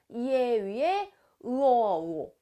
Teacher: 혀의 위치가 앞에서 발음되다가 뒤로 옮겨가